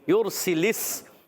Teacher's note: را ساکن سے پہلے پیش آ گیا، را کو پر پڑھیں گے، موٹا کر کے پڑھیں گے، سین کو سیٹی کے ساتھ ادا کریں گے